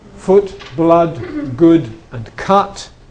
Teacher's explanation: The original old pronunciation, which was u, has split into two. Okay, so some words have got a and some words have got u. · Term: strut and foot